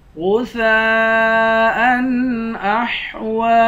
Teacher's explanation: کی مقدار کھینچ کر پڑھیں گے غین کو موٹا پڑھیں گے ثا کے بعد الف ہے الف کے اوپر مد ہے اس مد کو پانچ الف کی مقدار کھینچ کر پڑھیں گے